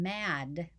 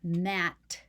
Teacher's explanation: mat and mad now we've made an um a phoneme difference even though we produce those two sounds in the same place in our mouth one has voicing and one doesn't